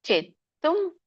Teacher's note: ಚವತ್ತಿದೆ ಒತ್ತಿ ಹೇಳಬೇಕು ದೀರ್ಘ ಇದೆ